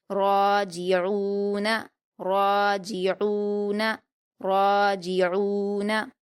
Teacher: را پر الف مدہ ہے، 2 حرکات کھینچ کر پر پڑھیں گے